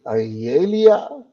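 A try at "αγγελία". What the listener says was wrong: Mistake number one. The emphasis is on the e at the end. So you said agelia. It should be whatever it is here. Then you say lia because the emphasis is on the iota here.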